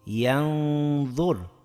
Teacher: sukunli nunimizni oʻzidan keyingi harfning mahrajiga biroz yashirib idg'om bilan talaffuz etdik va uni ikki harakatgacha chozdik.